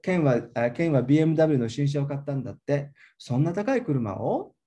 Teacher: That kuruma o get the rising intonation